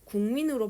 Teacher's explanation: 기억이 미음 만났을 때 얘가 이응으로 바뀌네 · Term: 비음